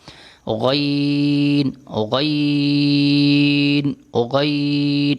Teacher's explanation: آگے ہے غین، غین کا مخرج وہی جو خوا کا مخرج تھا، گلے یعنی حلق کے اوپر والے حصے سے ادا ہوتا ہے، غین، حلق یعنی گلے کے اوپر والے حصے سے، یہ بھی موٹا ہوتا ہے خوا کی طرح، غین، غین، غین، اس کو موٹا کر کے پڑھتے ہیں۔